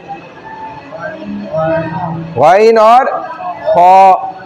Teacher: अदने हलक, जो हलक का इस गले के साथ ऊपर सबसे हिस्सा जुड़ा हुआ है, जहाँ से गईन और खौ खरखरा निकलता है